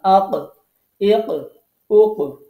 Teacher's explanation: পরে একটা ধাক্কা খেয়ে অক্ষরটা উচ্চারণ হচ্ছে, এটার নাম হচ্ছে কলকলা